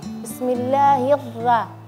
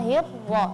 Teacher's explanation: ketika ra yang fathah ditipiskan